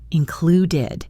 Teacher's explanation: The -ed ending here is pronounced with a did sound, included. The really tricky part is linking included with the next word, in.